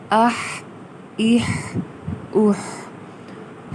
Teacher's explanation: ہا کی آواز وسط حلق سے ادا ہونی چاہیے